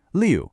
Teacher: This is another one of those falling tones, just like we heard with the number four.